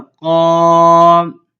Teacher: قاف الف زبر قام. تو ادھر الف سے پہلے قاف ہے، حروف مستعلیہ میں سے پر حرف ہے، تو یہاں پہ ہم الف کو پور یعنی کہ موٹا کر کے پڑھیں گے